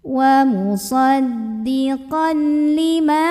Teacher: maka kita panjangkan mimnya dua harakat · Ma di sini ada hukum mad tabi'i karena ada alif sebelumnya fathah pada huruf mim. Maka kita panjangkan mimnya 2 harokat. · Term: Mad Thobi'i